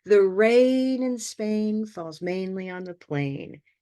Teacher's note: we can all hear those 4 important words, which are rain, Spain, mainly, plain